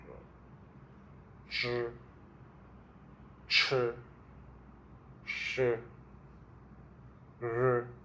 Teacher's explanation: These are the retroflex sound. The tongue is a bit curved at the back.